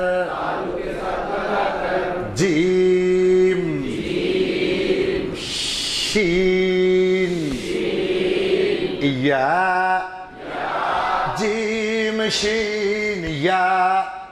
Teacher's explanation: 6 number मखरज ज़बान की बीच, ज़बान की बीच, उस बराबर ऊपर के तालु के साथ लगा कर